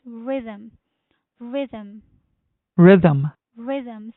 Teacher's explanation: So the stress is on the first syllable, which is rhythm.